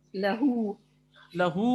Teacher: لہو یہ الٹا پیش ہے اصل میں, تو یہ ہاؤ کے ساتھ ہے, ہا کے ساتھ ہے واو صغیرہ, تو یہاں پر واو صغیرہ کو ہم کھینچیں گے